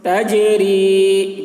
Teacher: جیم میں قلقلہ، یعنی جیم کی آواز ڈبل نکلے گی